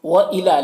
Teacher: لام میں کھڑا زبر ہے، یہ الف مدہ کی طرح ہوتا ہے، اسے ایک الف کے برابر کھینچیں گے